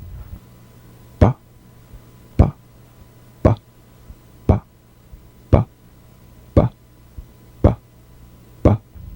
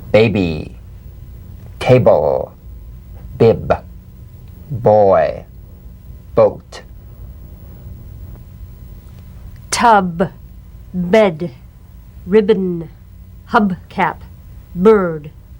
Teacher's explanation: Voiced, labial stop or plosive consonant. A drumbeat staccato consonant. Close the lips together gently and let them spring apart lightly. Play this on the springing away from contact, not by pressing the lips together.